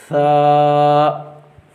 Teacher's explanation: تا، ثا، زبان جو ہے اس کا آگے والا جو سرا ہے اس کو اوپر والے جو دانت ہیں نا ان کے اندرونی حصے کے ساتھ لگانے سے یہ ثا جو ہے وہ ادا ہو جاتا ہے۔ زبان کا جو سامنے والا حصہ ہے اس حصے کو اوپر والے جو دانت ہیں ان کے اندرونی حصے کے ساتھ ملایا جائے تو اندرونی حصے کے ساتھ جب ملایا جائے گا تو پھر فوراً جو ہے وہ ثا ادا ہو جائے گی۔